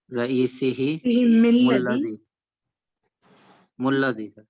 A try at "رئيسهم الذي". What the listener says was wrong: Why meme has kasra and why it has fatha? It will be connected with fatha.